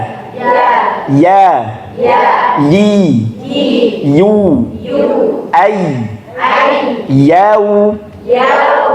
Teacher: Ya niku kan lewatnya tengah lidah nggih. Tengah lidah bertemu tengah lidah niki agak ditekan ke langit-langit. Iya. Jadi bukan mengalir.